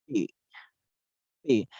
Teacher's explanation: The articulation is a voiceless bilabial stop or oral.